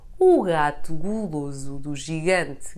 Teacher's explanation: read as [ʒ] in the words gigante and gelado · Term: soft G